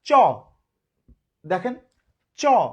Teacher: অল্প একটু বাতাস বের হচ্ছে, তাই অল্প প্রাণধ্বনি